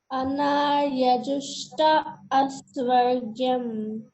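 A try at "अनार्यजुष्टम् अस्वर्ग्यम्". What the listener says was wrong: Just add ma towards the end after ajushta. Anaryajustam asvargyam.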